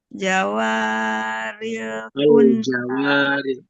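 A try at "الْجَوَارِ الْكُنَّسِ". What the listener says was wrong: Al-jawaril. Ada al di situ, Bun. Ada alnya. Al-jawaril kunnas.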